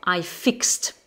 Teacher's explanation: ce verbe fixe finit par le son se et donc on va dire I fixed, le son te à la fin